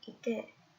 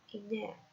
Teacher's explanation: the oral voice stop D becomes the nasal consonant N